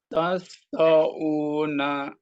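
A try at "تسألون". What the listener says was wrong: Lu, bukan tau. Bak doma ketemu wawu sukun. Mad tabi'i. Panjangnya berapa harokat? 2 harokat.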